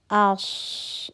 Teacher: آش، صاد، موٹا حرف. ہمس بھی محسوس ہو رہا ہے، ہوا کا چلنا محسوس ہو رہا ہے اور آواز کا چلنا بھی محسوس ہو رہا ہے. آش، آواز چل رہی ہے.